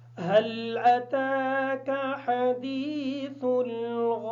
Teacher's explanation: هل أتاك کی جو ہا ہے اس ہا کو کلیئر کریں گے. تا کو کھڑی زبر کی وجہ سے تھوڑا سا لمبا کر کے پڑھیں گے. سا کو بالکل نرمی کے ساتھ ادا کریں گے.